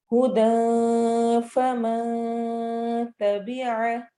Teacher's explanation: फमा में नून की आवाज को छुपाना है